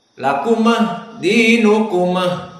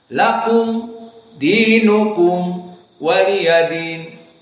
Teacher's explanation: pembacaan mim dalam keadaan jahar, maknanya tidak boleh ada nafas yang keluar.